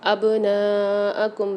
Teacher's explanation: با کے اندر قلقلہ کریں گے، یعنی ڈبل آواز نکالیں گے